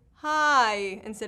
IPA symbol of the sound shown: aɪ